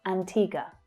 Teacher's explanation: And the last two vowel letters are actually unstressed, they make just one sound, the schwa.